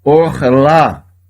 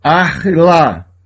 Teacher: Tenho aqui uma vogal O, porque eu tenho uma sílaba fechada com uma vogal breve. Duas consoantes e uma vogal, sílaba fechada, vogal breve.